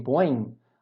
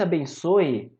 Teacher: a gente termina a pronúncia pelo nariz, não é? Esse ditongo aqui, ele é anasalado.